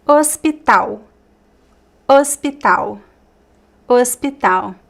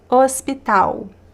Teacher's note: The l does not sound like an l. It's u.